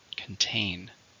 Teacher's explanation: How many syllables are in contain? 2, stress on the second.